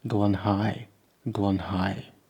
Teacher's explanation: The H means that the emphasis is in the second position, which is not usual in Welsh.